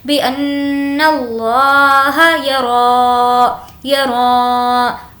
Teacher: را پر کھڑا زبر ہے، کھینچ کر پڑھیں گے